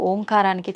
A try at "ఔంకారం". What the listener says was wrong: అది ఓంకారం కాదు, ఔంకారం. మీరు మనం పలకడమే దాన్ని తప్పు పలుకుతున్నాం. మనం మాట్లాడుతున్న ప్రతి మాటల్లో ఎక్కడో ఒక చోట అకారము ఉకారము మకారము ఉంటాయి. అకార ఉకార మకార అర్ధమాత్ర ఇది ఓంకార. అర్ధమాత్ర మకారం అన్నాడు. ప్లస్ ఆ. అర్ధమాత్ర అంటే ఔం అని ఉచ్చరించినప్పుడు అకారము ఉకారము రెండూ పలకబడి మూకారం దీర్ఘమవుతుంది.